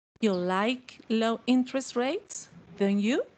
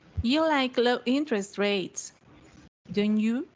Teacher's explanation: falling intonation shows you are checking information